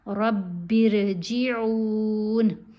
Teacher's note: امیر تابو تا بھی لمبا ہوگا, با بھی لمبا پڑھی جائے گی کیونکہ حرف مدہ ہیں ان کے ساتھ, اور را کو باریک پڑھیں گے. رب ارجعون با کو را سے ملائیں گے تو را باریک پڑھی جائے گی, با کے نیچے زیر ہے.